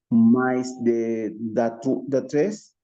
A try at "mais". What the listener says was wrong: salió el portugués. A ver, mira, la A I, recordemos que sonaba E. Entonces, me.